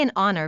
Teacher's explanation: For example, we say an honor because the H is silent and the word begins with a vowel sound